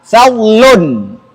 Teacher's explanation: kalau kita sukunkan lamnya harus tampak bunyinya.